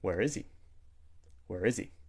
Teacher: we've removed the h sound, the H sound, and we've combined those words together